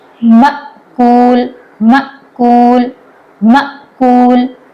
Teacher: ٹھیک ہے، حمزہ ساکن یہاں پر الف کی شکل میں آیا ہے. جب حمزہ ساکن ہوتا ہے وہاں اس کو جھٹکے سے پڑھا جاتا ہے